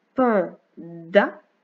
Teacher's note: ma langue se met derrière les dents quand je dis da. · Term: le son de